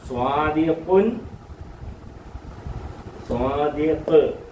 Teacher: full സ്റ്റോപ്പിൽ സുക്കൂൻ ചെയ്ത് നിർത്താം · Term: സുക്കൂനിൽ വഖഫ്